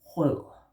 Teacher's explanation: Soft D, tongue down.